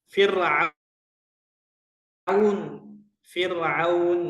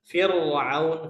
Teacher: ro sukun sebelum kasrah itu dibaca tarqik